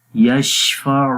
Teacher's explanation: من ذا الذی یشفع، شین کے اندر صفت تفشی ہوتی ہے، منہ کے اندر شین کی آواز پھیل جاتی ہے